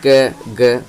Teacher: जो क और ग है ये दोनों वर्ण अल्प प्राण वर्ण है